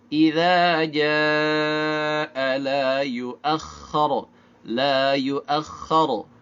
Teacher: Ini secara makhraj walaupun sama-sama lisan tapi berbeda tempat keluarnya ya. Idza ujung lidahnya keluar sedikit, kalau ja keluar dari tengah lidah.